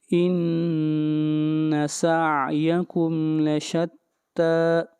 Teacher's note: تا کو لمبا کریں گے ایک الف کے برابر